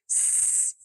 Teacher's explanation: س جو کہ محموسہ ہے یہ صرف ہوا کا ایک بہاؤ ہے